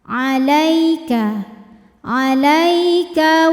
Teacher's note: ada harfulfulin atau huruf Lin sebab ada ya sukun yang sebelumnya berharakat fathah cara membacanya cukup dilembutkan atau dilunakkan